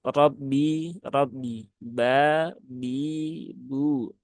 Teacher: huruf ba yang harusnya dia ringan dan tipis serta tidak disertai dengan keluarnya nafas atau dia tidak Hames dia sifatnya jaher karena tidak ditunaikan itu · maka ini perlu menjadi perhatian jangan sampai huruf ba itu keluar nafasnya ya. Nah, dan dia juga tipis, ringan saja ya, tidak terlalu berat.